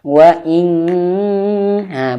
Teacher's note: ketika nun sukun persiapan ke huruf kaf, maka bunyinya menjadi eng ya. Wa ing ha, bunyi menjadi eng. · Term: ikhfa